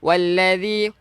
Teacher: Walladzina yutawaffawna minkum boleh. Walladhi, hujung lidah kita keluarkan sikit untuk zal